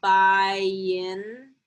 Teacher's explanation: if you really slow it down, by in, there's a little bit of what we call a glide